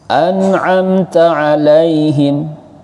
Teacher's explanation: Mem sukun bertemu ta. Namanya idhar syafawi, dibaca jelas.